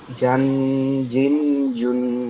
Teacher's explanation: জিমটা বলার সময় দুই দাঁতের পাটি জি একসাথে লাগায় রাখবেন, রেখে একটু শক্তভাবে বলবেন।